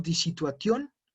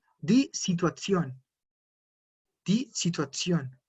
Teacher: pierde su sonido de T y ahora suena como una Z